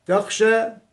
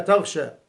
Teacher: إذا سكنت وجب إظهارها، وإلا انقلبت غينا. تخشى تقلب إلى تغشى